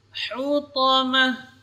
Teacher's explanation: Ha yang keluar dari tengah-tengah tenggorokan. Ha termasuk huruf tipis.